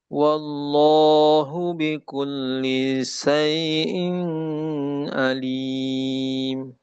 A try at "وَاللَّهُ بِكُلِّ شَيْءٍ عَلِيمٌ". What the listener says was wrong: Syai'in alim. Izhar. Syai'in. Ha, jangan didengungkan.